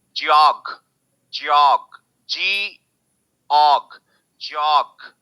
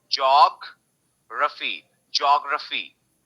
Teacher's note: now यू are stressing this, जैसे यहाँ पे ऑल पे स्ट्रेस था, यहाँ पे जॉग पे स्ट्रेस है